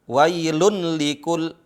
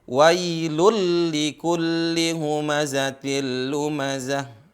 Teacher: Wailun likul, tapi di sini karena tanwin bertemu dengan lam jadi suara tanwinnya masuk huruf lam. Jadi wailul likulli humazatil lumazah.